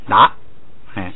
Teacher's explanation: 读成有这个鼻音的，前头带鼻音的达